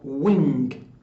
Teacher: itself nasal another example is related to wing so the vowel the vowel becomes nasalized under the influence of the nasal sound that comes after it